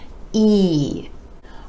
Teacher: our next four letters have the same vowel sound e e the sides of the lips retract just a bit for this sound and you want to give it more stretch more duration and a little more energy